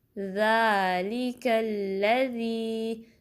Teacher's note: ذال کو نرمی سے ادا کریں گے، 2 کاؤنٹ سٹریچ کریں گے، لام کی کسرہ کو شارپ پڑھیں گے، لے نہیں پڑھیں گے بلکہ لی، کاف کو پھر لام سے ملائیں گے، ٹائم دیں گے اور لام کو باریک پڑھیں گے، ہیوی نہیں پڑھنا، پر نہیں پڑھنا۔